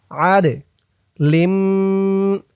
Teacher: এই দাল কলকলার হরফ ধাক্কা দিয়ে পড়তে হবে।